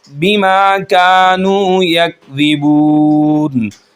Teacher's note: بما کو ہم ایک الف کے برابر کھینچیں گے